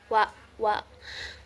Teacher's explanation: Huruf WA itu keluar dari bibir. Kemudian cara keluarnya itu tengah-tengah atau sedang.